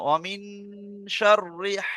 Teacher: অমিন শাররি, রিটা টান হবে না